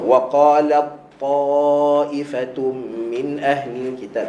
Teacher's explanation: ta dengan ta ni dia sama makhraj. Okey, hujung lidah belakang gigi atas.